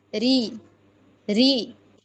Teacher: Dia nggak dibaca tebal. Ketika kasroh dia tipis.